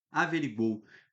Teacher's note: Pô, saiu alguma coisa pelo nariz? Não, nada pelo nariz. Então, oral.